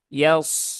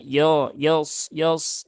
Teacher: pastikan ya-nya tipis kemudian huruf shad-nya baru tebal